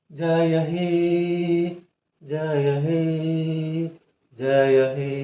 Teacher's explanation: ಇಲ್ಲಿ ಹೇ ಅನ್ನುವಂತದ್ದು ನಾವು ಮೂರು ಮಾತ್ರಾಕಾರದವರೆಗೆ ಉಚ್ಚಾರಣೆ ಮಾಡುತ್ತೇವೆ ಇದು ಹೇ ಅನ್ನುವಂತದ್ದು ಹ ಪ್ಲಸ್ ಎ ಸೇರಿ ಹೇ ಆಗಿದೆ ಅಂದ್ರೆ ಇದು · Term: ಪ್ಲುತ ಸ್ವರ